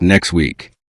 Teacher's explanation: The final T and next may be very weak.